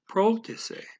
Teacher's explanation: So, and then we have the next word you would think by listening to Google, okay, it would tell you it's rotise. But for some reason he's putting a little P in there and saying protise